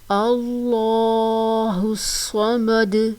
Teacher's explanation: صاد کو موٹا کر کے پڑھنا ہے اور صاد کو پڑھتے وقت سیٹی کی آواز بھی آئے کیونکہ یہ موٹے حروف میں سے ہے، حروف مستعلیہ میں سے ہے، ان کو ہر صورت موٹا پڑھا جاتا ہے.